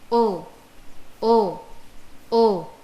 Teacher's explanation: ओ वर्णस्य उच्चारणे कण्ठः ओष्ठौ च अधिकौ सक्रियौ भवतः। अतः ओ वर्णस्य उच्चारणस्थानं कण्ठ ओष्ठौ स्तः। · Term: ओकारस्य